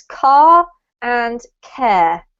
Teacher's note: That you can see they both have the letter R in them. But because I'm British, I don't actually pronounce that R. It affects my vowel sound, but I don't pronounce the R itself. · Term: British accent